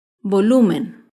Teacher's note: Volumen se acentúa en la penúltima sílaba, pero no lleva tilde porque termina en N. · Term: palabra grave